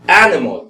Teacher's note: Entonces, en español es animal, pero se dice animal. Entonces vemos que la mayor fuerza de voz está en la primera.